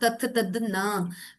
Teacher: ये सब दंतव्य, मतलब इसमें दांतों को टच होती है आपकी जीभ, राइट. तो ये क्या हो रहा है कि आपकी हवा को अवरोधन, आपके गले से निकली हवा को अवरोधन दे रहा है आपके कुछ बॉडी पार्ट्स.